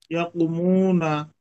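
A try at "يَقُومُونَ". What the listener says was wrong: হ্যাঁ, ইয়াকু, কুতে টানাবে প্রথম কুতেও।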